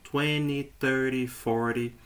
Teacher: basicamente eles eliminam a letra T e pronunciam com o som da letra anterior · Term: pronúncia americana